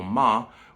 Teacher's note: they use a question particle ma, which bonus fact uses the fifth secret neutral tone.